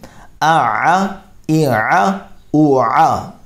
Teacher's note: اور عین جو ہے یہ حروف مستعلیہ میں سے نہیں ہے بلکہ درمیان حلق سے ادا ہوتا ہے